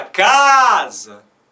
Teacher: O último A é fraco